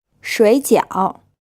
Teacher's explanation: This word is pronounced with two third tones. So as always, the first syllable becomes a second tone